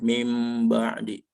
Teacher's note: Tapi untuk dibacanya bunyi nunnya menjadi bunyi mim, tetapi untuk bunyi mimnya jangan terlalu ditekan ya untuk bibir atas dan bibir bawahnya, tapi ada rongga sedikit ya, cukup samar dan ditahan. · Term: iqlab, iklab